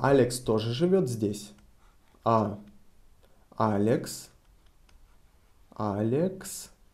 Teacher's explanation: we are interested if Alex is also living here so we raise our intonation on Alex